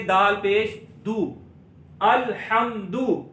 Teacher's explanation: दाल पर पेश है, होंठों को गोल करेंगे